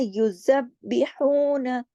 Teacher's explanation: बा को सख्ती से पढ़ना है, दो मर्तबा पढ़ा जाएगा क्योंकि उस पे तशदीद है